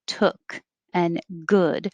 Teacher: this uh sound doesn't have rounded lips